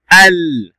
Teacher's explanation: لسان يرتفع الأعلى لام قمرية